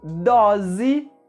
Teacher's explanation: doce, com a letra O com o som fechado, a letra C com o som de S e a letra E com o som de I no final da palavra. E dose, com a letra O aberta, a letra S com o som da letra Z e também a letra E com o som da letra I no final da palavra